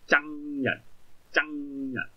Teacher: 咁個鼻音收聲咧係好重啦